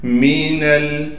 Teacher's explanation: نون کو آگے ہم لام سے ملا لیں گے